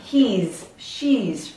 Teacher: the S ending will have a Z because we hear that vowel sound.